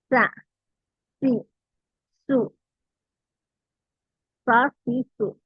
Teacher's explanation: സ നാവിന്റെ അരികിലൂടെയാണ് കാറ്റു പോകുന്നത്